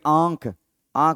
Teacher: आंख आंख बोलते ही आपके नाक में हल्का सा वाइब्रेशन होगा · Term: अनुनासिक स्वर